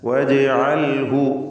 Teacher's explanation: വജ്അൽഹു ഈ പദത്തിൽ ജീമിൻ്റെ സുക്കൂൻ ഖൽഖല സുഗ്റ നൽകി ശബ്ദം ഹറക്കത്ത് പോലെ ചലിപ്പിക്കണം.